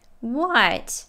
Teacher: she's yelling what it's a question so her pitch goes up she pronounces it with a true t at the end and